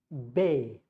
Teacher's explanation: But the moment you try to stop this air, like bay, you see, it was supposed to come at A, but I stopped it with my lips and the sound became bay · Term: consonant sound